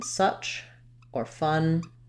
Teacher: people will unround it and use more of an uh vowel like in such or fun